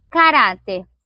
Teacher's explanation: a penúltima sílaba é mais forte